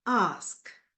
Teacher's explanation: back, open, unrounded